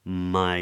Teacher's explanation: we get this lovely open diphthong